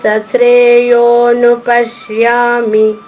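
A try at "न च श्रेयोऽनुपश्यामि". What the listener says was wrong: మూడో చరణంలో నచ చా పైన ఆఘాతం ఉంది కాబట్టి షా ఇంకా కొంచెం నొక్కి చెప్పచ్చు. నచ శ్రేయోను పశ్యామి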